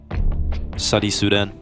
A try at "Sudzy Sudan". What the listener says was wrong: Sudzy. You're missing the Z on that.